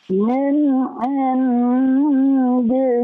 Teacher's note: nun sukun bertemu dengan dal, ya, ikhfa, ya. Jadi Bapak harus tahan.